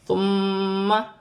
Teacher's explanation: میم مشدد میں غنہ کیا جائے گا